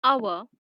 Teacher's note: in the word hour, the H is silent. It begins with the vowel sound A.